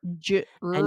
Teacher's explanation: we pull the tongue back it sort of curls a little bit in the back of our mouth and the sides of the tongue push against the upper teeth in the back of your mouth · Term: strong R